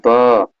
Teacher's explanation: ब बोल के देखिए दोनों ओठ आपके चिपक रहे हैं कि नहीं, ओठ के सहारे आप बोल रहे हैं कि नहीं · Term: ओष्ठ ध्वनि